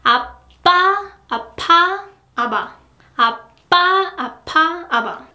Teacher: the more you go to a plain consonant side, the less time will be needed.